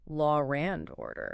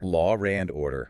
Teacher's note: that intrusive R often pops up in non-rhotic accents like British English